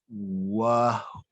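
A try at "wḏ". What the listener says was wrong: So you're missing, this is a biliteral, you're missing one of the characters of this biliteral. Wedge. Wedge-ui. And that's where this T comes from too. You need some kind of dental in here to get this T into the Coptic.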